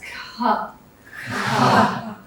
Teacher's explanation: You feel that expulsion of air that comes behind it.